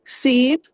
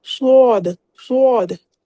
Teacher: सीन को हम लोग जो है बारीकी से पढ़ते हैं और स्वाद को हम लोग मोटा करके पढ़ते हैं। दोनों में आती है सीटी की आवाज।